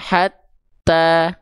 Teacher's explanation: Makanya huruf yang bertasdid itu ditekan dulu baru keluar ke harakatnya. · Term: konsep tasydid